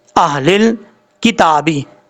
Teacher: ہا کو بھاری ساؤنڈ کے ساتھ پڑھیں گے، اس کا تعلق اس حلق سے ہے جس حلق کا تعلق سینے سے ہے ، اس لیے اس کو بھاری ساؤنڈ کے ساتھ پڑھیں گے،